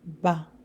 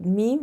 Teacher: there's a bit more pressure for ba than ma